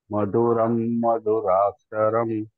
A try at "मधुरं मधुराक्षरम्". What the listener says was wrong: थोड़ा स्ट्रेस चाहिए था वहां पे मधुरम मधुराक्षर थोड़ा प्रैक्टिस में आएगा कोई दिक्कत नहीं है